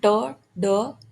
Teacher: alveolar, टंग plus alveolar ridge, alveolar ridge अपर teeth के just पीछे की रिज को बोलते हैं